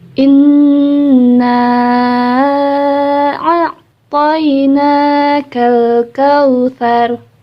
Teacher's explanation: cukup ditahan dan Keluarkan suaranya melalui suara hidungnya berdengung hidungnya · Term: bacaan gunnah